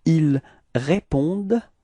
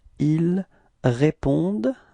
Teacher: Ils répondent, repeat, ils répondent, okay, so it's actually a common mistake that usually students tend to pronounce this E-N-T, so they want to pronounce it like en, okay, but then keep in mind that for verbs we don't pronounce them, so E-N-T is actually not pronounced, it's only répondent.